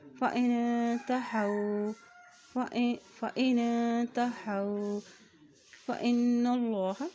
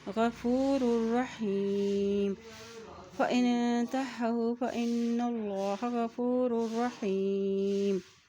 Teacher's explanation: اللہ کے نام سے پہلے زبر آ گیا ہے تو اللہ کا نام بھی موٹا ادا کیا جائے گا